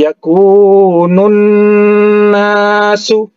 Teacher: Huruf alif lamnya tidak dibaca, ya, itu ciri khasnya alif lam syamsiyah. Kemudian huruf nun bertasydid, ya, didengungkan jadi gunnah musyaddah